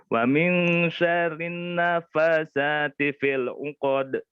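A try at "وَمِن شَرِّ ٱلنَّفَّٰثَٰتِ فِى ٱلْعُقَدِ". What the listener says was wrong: Nun tasdid ingat. Wa min syarrin naffasati fil 'uqad.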